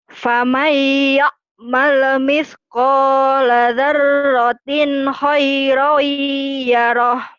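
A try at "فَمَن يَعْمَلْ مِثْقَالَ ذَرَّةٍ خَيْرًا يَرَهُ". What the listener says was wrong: Itu yang tadi saya ketawa-ketawa dengerin di kau. Famai ya male. Jangan ada e-nya ya. Famai faman ya'mal misqala dzarratin khairan yarah. Yuk, faman ya'mal, jangan ada ya'mali. Faman ya'mal misqala dzarratin khairan yarah.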